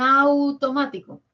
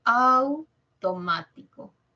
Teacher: un diptongo Au suena más la a